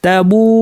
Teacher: তাবু মাদ্দের ওয়াও ছিল, ওয়াও সাকিন পূর্বে পেশ, এরপরে হামজা আসছে একই শব্দে, কতটুকু টানবো 2 আলিফ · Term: মাদ মুত্তাসিল